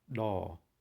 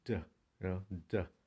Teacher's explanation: The English letter D sounds is an explosive, which means the sound just sounds like d, d. But the consonant da in Cambodian is an implosive